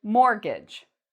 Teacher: There is a T in this word, but we don't pronounce the T. So even though there's a T in the spelling, when we pronounce it, we say mortgage.